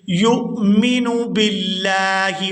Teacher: یہاں یا کو حمزہ ساکن کے ساتھ ملائیں گے تو جھٹکے کے ساتھ ادا کریں گے،